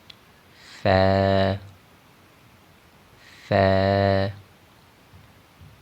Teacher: فا کو ادا کرتے ہوئے سیٹی کی آواز بالکل بھی پیدا نہ ہو، بلکہ اس کو نرمی سے ادا کریں گے، اور سیٹی کی آواز جو ہے وہ اس میں نہیں ہوتی۔